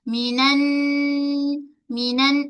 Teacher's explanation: Terus kita menakan pada nun sabdu. Ghunnah pada nun saddu adalah ghunnah kamilah.